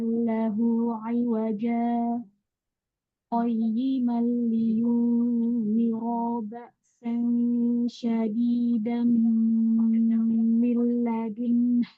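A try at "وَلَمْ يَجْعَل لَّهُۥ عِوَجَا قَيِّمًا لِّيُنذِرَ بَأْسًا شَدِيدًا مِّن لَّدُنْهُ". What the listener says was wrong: Salahnya tuh di sini. Di mana ya tadi? Di ro-nya panjang ro-nya.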